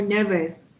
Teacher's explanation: a word ending with ous the ou is also pronounced as a schwa